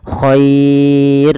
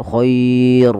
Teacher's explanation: r-nya ini tidak boleh ditebalkan tapi dibaca dengan tipis dan kita namakan dengan ro tarqik